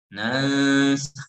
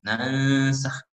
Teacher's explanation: meletakkan ujung lidah kita di makhraj sin